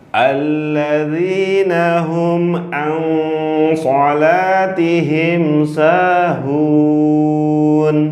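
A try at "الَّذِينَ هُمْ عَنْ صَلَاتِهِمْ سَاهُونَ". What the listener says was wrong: Hurufnya yang tidak masuk ke hidung jangan dimasukin ke hidung.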